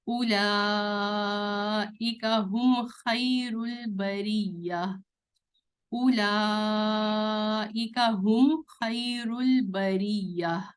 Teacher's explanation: میم کے بعد خو ہے تو میم کو کلیئر پڑھیں گے، جلدی پڑھیں گے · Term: کلیئر میم